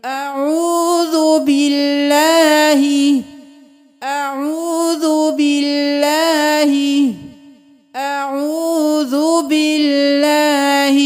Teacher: کیونکہ اللہ کے لفظ سے پہلے والے حرف پر جب بھی زیر ہوگی تو ہم باللہ پڑھیں گے، اللہ کے لفظ کو باریک پڑھیں گے